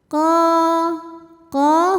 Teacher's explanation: Qo qo hukumnya mad thobi'i zohiri. Karena ada alif yang sebelumnya berbaris fathah. Maka huruf qof kita bunyikan panjang dua harakat.